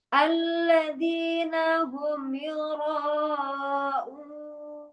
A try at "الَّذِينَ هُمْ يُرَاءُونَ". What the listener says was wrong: Nah, itu tinggi sekali. Yuraun. Terangkat sekali itu. Alladzina hum yuraun. Turunkan. Turun. Kan irama genap. Jadi kita berirama ibaratnya naik kendaraan motor misalnya gitu kan. Kita mau berhenti nih, jangan ditancap, itu jalan lagi tuh kendaraannya. Jadi diturunkan.